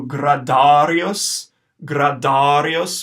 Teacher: Gradarius with a nice long A in the middle of the word and with rolling our R's.